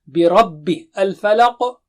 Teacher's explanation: برب الفلق، را موٹا ہے، ربی نہیں